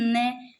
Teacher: मसूड़े से स्पर्श कर रहा है भाई, इसलिए दंत्य कहाँ से हो गया, दांत तो टच ही नहीं कर रहे, न थोड़ा मसूड़ों पर जा रहा है, इसलिए ये दंत्य में नहीं, ये किस में आ जाता है, वर्त्सय में आ जाता है।